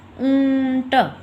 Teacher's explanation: जैसे हम लिखते हैं इसकी कुछ एग्जांपल्स। ऊंट, मुंह में से भी आवाज़ आती है और नाक से भी आती है · आपके मुख और नाक दोनों से आवाज़ आ रही है, उसे हम क्या कह देते हैं, अनुनासिक वर्ण